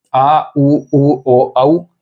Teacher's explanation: जीभ के पश्च भाग से इन 5 वर्णों को बोला जाएगा, 5 स्वरों को बोला जाएगा।